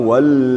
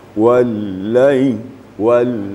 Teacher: yang kedua wiili ini juga tasdik tasdik tentang lam lam ni sifatnya adalah wasatiah pertengahan tidak syiddah dan tidak pula rakhaw di antara syidah dan rakhawa sifatnya apabila dia Sukun dan bertasdid